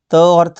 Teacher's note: त और थ का उच्चारण स्थान दांत है।